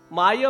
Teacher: म्हणता म्हणता ओठालागी ओठ भिडे